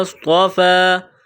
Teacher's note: صاد میں سیٹی کی آواز پیدا کرنی ہے، موٹا کرنا ہے